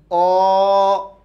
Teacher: অ বলার সময় কোথাও বাধাপ্রাপ্ত হয় না বা আর কোন স্থানের ইউজ হয় না তাই এটাকে আমরা কি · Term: স্বরধ্বনি